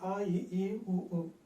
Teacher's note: తేలికగా ఉచ్చరిస్తున్నటువంటి ఆ ఈ ఊ అనేవి వచ్చాయి. అంటే కంఠం దగ్గర నుంచి ఆ, మధ్యలో తాలు భాగం నుంచి ఈ, పెదవుల దగ్గర ఊ